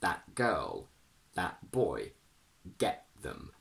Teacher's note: when we have a vowel plus T plus a consonant, we do use a glottal stop, regardless of what consonant that is. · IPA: /ʔ/